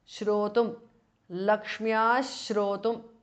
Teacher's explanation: So it becomes Ashtottara Shatam Lakshmyaha because of Sandhi. Visarga changes to Shu there